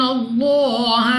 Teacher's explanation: اس لام آف اللہ کو پر یعنی موٹا پڑھیں گے، منہ اور آواز کو کھول کر